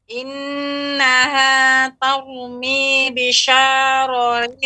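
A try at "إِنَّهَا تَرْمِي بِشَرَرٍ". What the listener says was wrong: Bisyararin, langsung, tidak dibaca panjang. Bisyararin.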